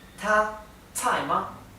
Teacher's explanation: la pronunciación ta con el tono alto, tsai con el tono que cae, tsai, y ma es neutro